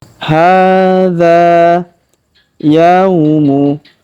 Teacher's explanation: huruf ya kita ayun sekali karena waw sukun di depannya